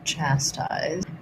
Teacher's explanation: for chastise, we have first syllable stress.